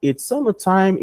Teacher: Encerrou uma ideia, joga a voz para baixo. Iniciou uma ideia, joga a voz para cima.